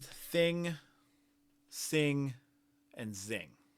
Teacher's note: All three of these are fricatives, but you can see that the TH is less intense than the S or the Z. · the TH is less intense than the S or the Z. You can also see that both S and Z, they're made in the same place.